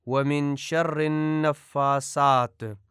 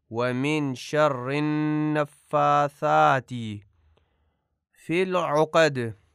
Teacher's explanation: ثا کو سے پڑھا جاتا ہے جو کہ غلط ہے